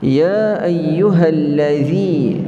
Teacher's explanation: Huruf za ini orang Melayu kita tak biasa, iaitu huruf yang keluar daripada hujung lidah kita, kita sentuh kepada gigi hadapan kita, keluar sedikit